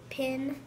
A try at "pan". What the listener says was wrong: Pin? Or what sound does A make? A. So what is it? Pan.